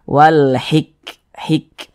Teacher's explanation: Huruf kaf ini dia sukun. Huruf kaf itu ketika dia sukun, maka ketika kita mengucapkannya ada napas yang mengalir seperti percikan. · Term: sifat hamas